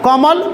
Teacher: कमल में क्रमशः क तथा म पर बल दिया जा रहा है, कोमल, तो क म पर ज़्यादा बल दिया है, ल पर कम बल दिया है।